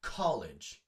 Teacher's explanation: college, the emphasis is on call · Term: stressed syllable